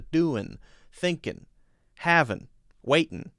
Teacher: what y'all doing takes the ing sound and makes it just an N sound. And in fact, there's a spelling for it where there's an apostrophe after the N. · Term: Southern drawl